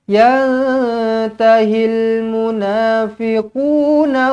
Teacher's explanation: Nun kosong bertemu dengan ta ikhfa Hakiki dengungkan dua harakat